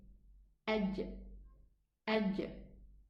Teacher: I totally close the middle part of the tongue against the middle part of the upper palate. · So the tip of the tongue is, it's tightened against the lower gum, and I rise up the middle part of the tongue and I strike the upper palate. And I say aj.